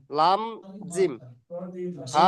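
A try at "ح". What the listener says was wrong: জিম নয়, জিম কেন হবে ওটা? লাম জিম কেন হবে?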